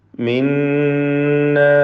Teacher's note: ഷദ്ദുള്ള നൂനിനെ മണിക്കണം, നൂൻ മുഷദ്ദദ